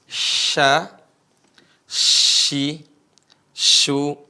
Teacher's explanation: Tengah lidah nempel ke langit-langit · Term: huruf syin